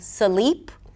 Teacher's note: the word 'sleep' might be pronounced as a 'suh-leep' - with a schwa in the middle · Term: breaking consonant clusters